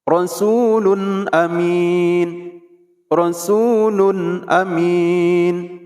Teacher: bacaannya tidak boleh didengungkan, singkat, padat, jelas. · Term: izhar